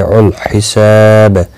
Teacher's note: سریع ریہ مدہ ہے، ایک الف کی مقدار کے برابر کھینچ کر پڑھیں گے۔ الحساب سا الف مدہ ہے، ایک الف کی مقدار کے برابر کھینچ کر پڑھیں گے